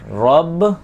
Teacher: یہاں پر را کو موٹا بھی پڑھیں گے کیونکہ را کے اوپر زبر ہے